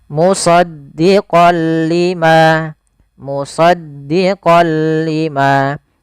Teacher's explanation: karena bertemu dengan huruf lam, tanwinnya masuk ke huruf lam. Suara n-nya dihilangkan menjadi diganti menjadi huruf lam. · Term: idgham bila gunnah